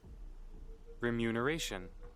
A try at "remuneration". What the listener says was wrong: Remuneration. Muneration, not noom.